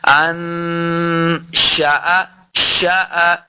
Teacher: شین اور حمزہ کو لمبا نہیں کریں گے